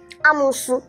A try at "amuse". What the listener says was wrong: This is pronounced as amuse. Amuse. Not amusu. It's amuse. Take corrections. Amuse, not amusu.